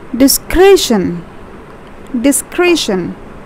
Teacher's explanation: it's a three syllable word and we pronounced it as discretion it's basically shun at the end